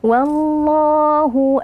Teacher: berikan sifat bainiah yaitu ada sedikit aliran suara jangan langsung kita putuskan aamu tapi harus alirkan sedikit Ma Ma